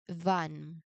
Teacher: you start with the teeth to lip position, you turn your voice on, and then you let the air hiss through into the to the a vowel.